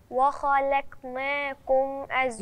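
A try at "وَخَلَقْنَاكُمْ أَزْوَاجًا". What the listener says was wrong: انا مش عايزاكي ترقق اللام وبعدين ترقق القاف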